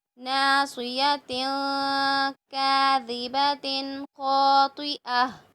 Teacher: تنوین کے بعد کاف آ رہا ہے تو کاف حروف اخفا میں ہے تو ضرور اخفا